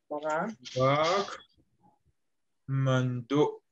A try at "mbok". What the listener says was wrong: Ah, c'est pas le coup de got à la fin. Ce n'est pas mando.